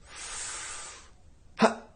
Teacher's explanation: can hear how I exhales quickly and held my breath huh that feeling of holding your breath is compression it is the closing off of the vocal cords you can then release the air and you'll hear a pop